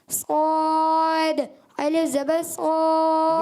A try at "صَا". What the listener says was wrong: یہ آپ نے کیا پڑھا؟ صاد، صاد، آخر میں کیا کیا پتہ ہے؟ آپ نے الف کو باریک کر دیا۔ الف کو باریک نہیں کرنا، جب حروف مستعلیہ کے ساتھ جو الف آتا ہے نا اس کو پر رکھنا ہے آخر تک۔